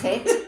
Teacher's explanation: And it ends like a scraping sound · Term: guttural sound